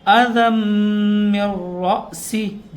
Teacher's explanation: فَمَن كَانَ مِنكُم مَّرِيضًا أَوْ بِهِ أَذًى مِّن رَّأْسِهِ، دیکھیں یہاں پر بھی غنہ کر رہے ہیں. تنوین کے بعد میم آ رہا ہے تو یہاں ادغام ہوگا